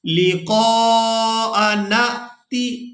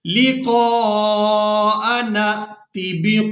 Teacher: अब नून को जब हम हमजा साकिन के साथ मिलाएंगे तो झटके के साथ अदा करेंगे